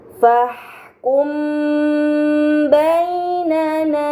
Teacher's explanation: mim sukun bertemu dengan huruf ba ini dinamakan Ikhfa Syafawi maka mim sukun harus dibaca secara samar dengan gunah yang dipanjangkan